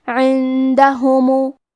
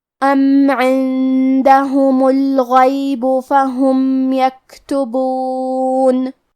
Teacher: ہا پہ اور میم پہ پیش ہے لہذا ہم یہ دونوں پیش کو ظاہر کریں گے اور اسے برابر سے ادا کریں گے۔ کلمت الغیب میں حرف الغین کو ہمیں موٹی آواز میں پڑھنا ہے۔ کلمت یکتبون میں کاف ساکن ہے لہذا ہمیں کاف کو ہمزے سے پڑھنا ہے ام عندهم الغیب فهم یکتبون۔